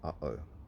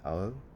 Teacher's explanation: you close your throat off in between the two sounds instead of it just being uh-oh, where it just all smushes together. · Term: glottal stop